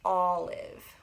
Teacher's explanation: like this apple i'm smiling kind of we don't want that we want the aw sound i'm making a big o